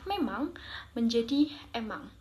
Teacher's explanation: ada kata memang menjadi emang, yang juga merupakan contoh aferesis dalam fonem M di awal kata dihilangkan